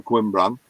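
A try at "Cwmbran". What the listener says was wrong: No, it's Cum, not Quim. Cumbran.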